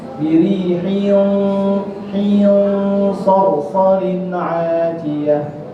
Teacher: birihin, tu dia tebal. Sebab dia ikhfa, dia pada huruf isti'ala sad